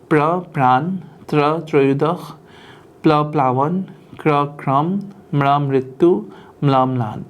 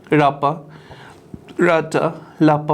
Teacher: word initial onset clusters in Assamese can be formed by combining either stop plus liquid or nasal plus liquid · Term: consonant cluster